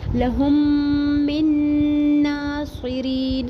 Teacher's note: صاد کو پر پڑھیں گے، ری یا مدہ ایک الف برابر پڑھیں گے اور آیت ختم ہونے کی صورت میں وقف عارض سکون کریں گے، نون کو ساکن کر دیں گے.